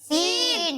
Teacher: जब हम सीन की अदायगी करेंगे तो इसमें सीटी की आवाज आएगी और इसे हम बारीक करके पढ़ेंगे।